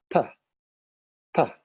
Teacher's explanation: Position 4 is dental, and as a reminder, we don't use this position in English.